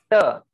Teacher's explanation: Dental, you see it is touching the root of your teeth.